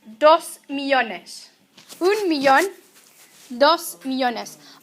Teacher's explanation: Also notice that millón needs an accent because the stress is on the last syllable, but millones does not need an accent because the stress is where it's supposed to be on the second to last syllable